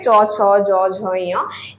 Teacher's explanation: চ ছ জ ঝ এই পাঁচটা ব্যঞ্জন ধ্বনিকে বলবো তালব্য ব্যঞ্জন ধ্বনি